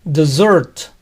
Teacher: postre se pronuncia dessert, con Z, aun cuando tiene una doble S